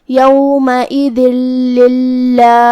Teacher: پھر حرف اللام ہے کلمت للہ میں تو یہاں حکم ہوا ادغام بغیر غنہ، تو ہم یہ تنوین کو لام میں ملا کے بغیر غنہ سے لیکن تشدید کے ساتھ یہ حکم کو ادا کریں گے۔ کلمت للہ یہاں لفظ الجلالہ کا حکم ہے ترقیق، مطلب ہمیں اسے ہلکی آواز میں پڑھنا ہے کیونکہ اس سے پہلے زیر ہے۔